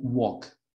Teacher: the L doesn't sound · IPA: /wɔːk/